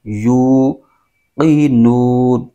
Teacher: یو میں واو مدہ ہو رہا ہے، اس کو 1 الف کھینچ کے پڑھیں گے